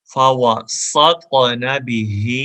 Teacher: ہا کو گلے سے سینے سے ادا کریں گے